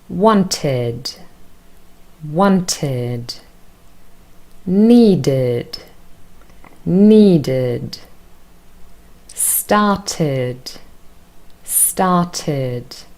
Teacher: our third group is the group of verbs where ed is pronounced as id, because all of them end in t or d in their infinitive form